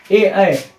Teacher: जिसका उच्चारण कंठ और तालु दोनों से होता है, उसे कंठ तालाबे वर्ण कहते हैं